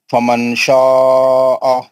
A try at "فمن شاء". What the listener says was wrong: نہیں کیسا پڑھیں گے؟ نہیں فمن شاء. نہیں نون کا آواز نہیں آ رہا. فمن ایسا ناک میں سے.